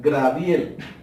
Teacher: al decir Graviel, la R está dentro de la palabra, pero no está en el lugar que le corresponde. De ahí el error, porque la R tiene que buscar su puesto y dar que lo correcto es Gabriel.